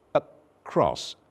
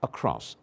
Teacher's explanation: The symbol is an upside-down E. And the sound is a cross, a very simple, very weak, very short vowel, a cross. By the way, vowel number 12 is the most common in the English language, a cross.